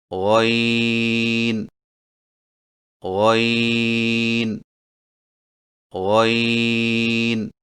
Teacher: غین کی ادائیگی میں زبان کی جڑ کو تالو کی طرف بلند کرتے ہوئے موٹی آواز میں پڑھیں، یعنی غین غین غین۔